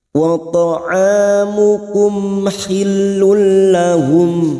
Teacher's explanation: Karena mim sukun bertemu ha kita baca jelas, namanya bacaan idhar safawi.